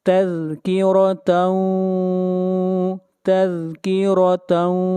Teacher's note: यहाँ पर रॉ को मोटा पढ़ा जाएगा, रॉ के ऊपर ज़बर है।